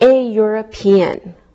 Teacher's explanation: We pronounce the E and it sounds like a Y.